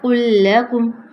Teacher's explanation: لام کو موٹا نہیں کرنا، قاف کو موٹا رکھتے ہوئے لام کو باریک کر دیجیے گا